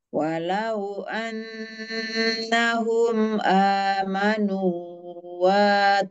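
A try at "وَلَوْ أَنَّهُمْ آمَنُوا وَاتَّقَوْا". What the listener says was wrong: Nah, nu-nya kepanjangan nu-nya. Qaw wattaqaw.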